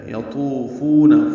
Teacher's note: یطوفون، یا کو جلدی پڑھیں گے. تو پر ہے، واو مدہ ہے، یہ 2 حرکات لمبا کریں گے. تو کو موٹا پڑھتے ہیں اور اس میں زبان اوپر تالو سے بھی چپک جاتی ہے.